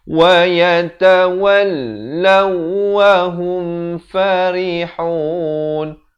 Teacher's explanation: Law, waw juga bersabdu. Lam bersabdu, waw bersabdu. Jadi kedua-duanya ditekankan.